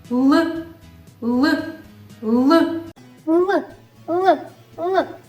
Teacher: звук л є приголосним наш голосочок при його вимові не співає вимовляється він за допомогою язичка який кінчиком торкається верхніх зубиків